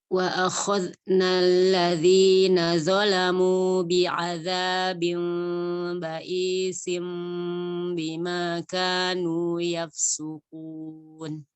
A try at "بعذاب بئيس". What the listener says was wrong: Oke, ba'isim bi juga kasih celah, kasih furjah.